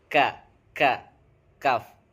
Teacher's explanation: pangkal lidah sedikit ke depan dengan menurunkannya sedikit keluar darinya huruf kaf.